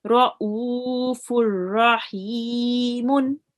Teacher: So here we are not reading fun rahimun, we are reading fur rahimun. So we have, instead of the fatatain, we have made it to one zammatain, we have made it to one zamma.